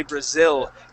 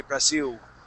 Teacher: They don't say Brazil and pronounce that L. They say Brasil. And they pronounce it more like a U.